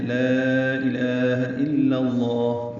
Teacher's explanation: پہلے لام کو 4 حرکات لمبا کرنا ہے، یہ مد منفصل ہے